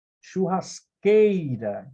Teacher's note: Então, a sílaba que você mais demora foneticamente é a penúltima. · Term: paroxítona